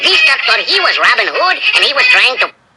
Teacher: the pitch rose nearly every time at the end of the sentence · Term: rising intonation